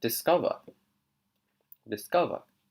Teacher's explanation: so she's not really pronouncing the V there in her accent